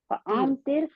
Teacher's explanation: آپ کو پتا ہے یہ را بھی موٹی پڑی جائے گی، جی کیونکہ اس سے پہلے موٹا حرف ہے